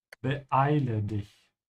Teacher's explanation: The two e's are not connected. You have to have a small hiccup in between here.